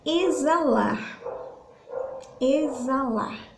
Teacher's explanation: O som de Z. Esse X, ele não sai na hora da nossa pronúncia. A gente troca esse som pelo som do Z